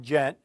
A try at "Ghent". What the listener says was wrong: Ghent. You said gent.